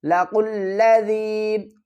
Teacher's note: لَقُلَّ، ذال یا زیر ذی، لَقُلَّ ذی، یا ساکن سے پہلے زیر ہے، کھینچ کر پڑھیں گے ایک الف کی مقدار۔